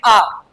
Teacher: तो आ जैसे ही हमने उच्चारित किया तो मुख सबसे ज्यादा खुलता है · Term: विवृत